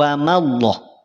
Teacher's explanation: Ma jangan terganggu jadi tebal, tidak dibaca tebal. Ya, awas, tidak dibaca tebal, tidak wa mallah, tidak wa ma dibaca tipis dulu, wa mallah.